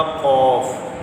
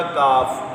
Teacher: نقطوں والا قاف پر ہے اور ڈنڈی والا کاف بریک ہے